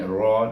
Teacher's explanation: ra baris di atas bunyi ra tebal, baca dengan tebal